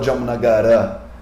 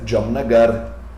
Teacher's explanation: Na verdade, a palavra se escreve Jamanagara, mas ninguém fala Jamnagara, porque o A é fraco. O último A da palavra é fraco, então a gente corta ele. A gente pronuncia Jamnagar, sem o A.